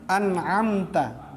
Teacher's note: Amta aja mim ketemu ta, mim mati ketemu ta, tidak dengung. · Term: izhar syafawi